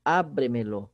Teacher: Só que a sílaba tônica continua sendo o A do verbo imperativo abre.